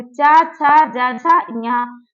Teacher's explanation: तालु माने हमारी जिह्वा का अग्रभाग जो है तालु से स्पर्श करे